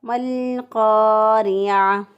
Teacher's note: را کو باریک پڑھا، الف اور قاف اور الف دونوں موٹے پڑے جائیں گے ، را باریک ہوگا کیونکہ را کے نیچے زیر ہے، تو